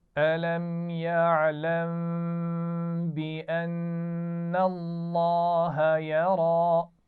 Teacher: بأن الله اور یا را میں را پر کھڑا زبر ہے تو اس کو موٹا پڑھیں گے.